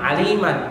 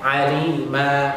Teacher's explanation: berhenti pada huruf berharokat fathatain dibaca 2 harokat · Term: wakaf